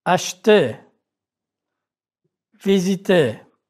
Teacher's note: R is not pronounced in the infinitive of ER verbs